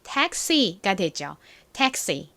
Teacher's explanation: X는 이렇게 모음이 뒤에 들어가면 먼저 기역 받침을 넣어주셔야 되고요. 그 다음에 스 소리가 납니다. 자, X는 모음 뒤에 들어가면 기역 받침의 스 소리 이렇게 기억을 해주시면 됩니다.